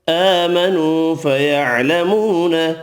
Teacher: کھڑی زبر واو مدہ تینوں ایک الف کی مقدار میں کھینچ کر پڑھیں گے